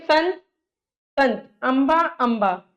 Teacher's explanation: अनुस्वार के उच्चारण में हवा केवल नाक से निकलती है नाक से नि न न न की ध्वनि आएगी नाक से